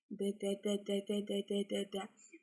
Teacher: Когда шире рот, язык поднимается, и тем самым воздушная струя идет не через щеки, а через как раз вот щелочку, которая образуется при отрывании языка от альвеол. И тогда, получается, вырабатывается как раз нужная воздушная струя, и ребенок понимает саму артикуляцию данного звука, и потом данный звук он может также автоматизироваться в словах, словосочетаниях, предложениях.